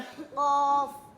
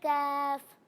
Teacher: जब हम काफ को अदा करते हैं तो इसे हम मोटा नहीं बल्कि बारीक पढ़ते हैं